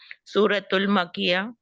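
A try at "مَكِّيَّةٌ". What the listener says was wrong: मक्कियतुन, सूरतुल मक्किया नहीं, मक्कियतुन। तुन तुन तुन।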